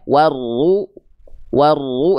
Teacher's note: kenapa bisa tebal? Karena pangkal lidahnya naik